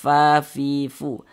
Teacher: Huruf fa ketika mengucapkannya juga ada nafas yang mengalir, fa fi fu. Karena huruf fa juga merupakan salah satu huruf yang memiliki sifat hamz.